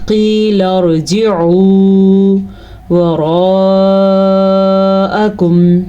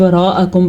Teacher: مد کو لمبا کر کے پڑھیں گے کیونکہ یہ وہ مد ہے جو 3 سے 4 سیکنڈ تک لمبی کی جانے والی مد ہے ، تو اکثر لوگ اس کو شارٹ وراءکم پڑھ لیتے ہیں،